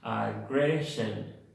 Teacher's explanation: En la palabra aggression tenemos dos schwas nuevamente